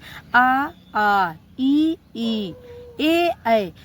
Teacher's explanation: आवर्त मुखी स्वर होते हैं उनका मुख का गोलाकार नहीं बनता है। वह गोलाकार नहीं बना पाते हैं। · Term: आवृत्तमुखी